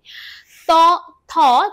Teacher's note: ত থ উচ্চারণ করার সময় তোমাদের জিভ দাঁতে গিয়ে ঠেকছে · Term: দন্তধ্বনি